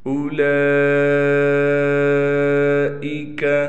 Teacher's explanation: لام پر کڑا زبر بھی ہے اور لام پر مد بھی ہے، لہٰذا 5 الف کی مقدار مد کیا جائے گا۔ اولئک، یہاں پر ہم نے حمزہ کو بالکل نہیں کھینچنا، واو ہے لیکن واو پر نہ زبر ہے نہ زیر ہے نہ ساکن ہے، کچھ بھی نہیں ہے، اس واو کو ہم نہیں پڑھیں گے، تو حمزہ کو ہم نے بالکل نہیں کھینچنا، اس بات کا خیال کرنا ہے۔